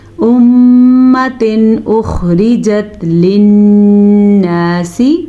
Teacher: تنوین کے بعد حمزہ آیا ہے جو کہ حروف حلقی میں سے ہے، تو ہم تنوین کو ظاہر کر کے بغیر غننے کے پڑھیں گے